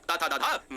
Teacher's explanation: जो दांत की सहायता से बोले जाए वो दंत यानी दंत स्पर्श व्यंजन कहलाते हैं